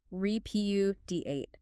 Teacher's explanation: Four syllables stress on the second.